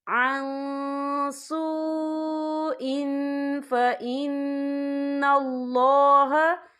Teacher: عن سوء، حمزہ کے نیچے تنوین ہے، تنوین کے بعد جو ہے فا آ رہا ہے اور فا جو ہے اکفا کا ورڈ ہے، تو ہم یا اکفا کریں گے، تنوین کی آواز کو ناک میں چھپائیں گے